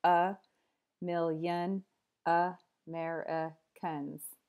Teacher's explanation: seven syllables five contain the schwa sound uh million Americans so only the stressed syllables don't have the schwa they have the full vowel sound here mill and mer everywhere else · So to give you an example, here in this phrase, a million Americans, five schwas are in there. Out of seven syllables, five contain the schwa sound. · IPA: ə ˈmɪljən /əˈmerəkəns/